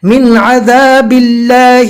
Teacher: من عذابی، یہاں پر اکفا نہیں کریں گے، جزم والے نون کو ناک میں نہیں پڑھنا ہے، اس لیے کہ یہاں پر جزم والے نون کے بعد اظہار کے 6 حروف میں سے عین ہے